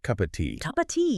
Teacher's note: a very weak O sound or sometimes it almost disappears entirely. So it sounds more like cup of tea.